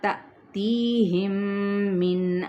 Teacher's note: میم ساکن کے بعد میم متحرک، ادغام شفوی